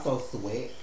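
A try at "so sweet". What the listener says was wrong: Sweat? Sound like sweats.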